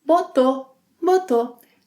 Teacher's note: Again, some speakers omit the final U sound